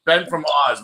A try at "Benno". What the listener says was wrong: No, it's not. It's Benno. Can't you not pronounce the fucking second N and O?